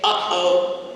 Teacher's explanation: For example, if you say uh-oh in English, that stop that happens in the middle of your throat, uh-oh, you can kind of feel your, not Adam's apple, Eve's apple, you can kind of feel your throat bob up and down, uh-oh, that's a glottal stop.